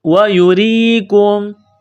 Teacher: را کے نیچے زیر ہے، را کو باریک کرنا ہے، را کو یا کے ساتھ ملانا ہے. وَيُرِيكُمْ، کاف کو میم کے ساتھ ملانا ہے، پلس کرنا ہے، کاف کو باریک کرنا ہے.